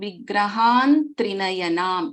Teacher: We chant it as Sindhuraruna Vigraham Trinayanam, because the last letter, fifth letter of this particular ta varga is na, ta, tha, da, dha, na. So this Anuswara gets replaced by na. So Vigrahan Trinayanam it becomes. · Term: Varga Panchama rule